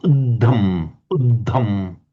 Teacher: we've got a double D, but it's also aspirated